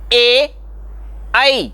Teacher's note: तो कंठ से भी आवाज निकलती है और तालु को भी जिह्वा टच करती है। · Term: कंठ तालव्य वर्ण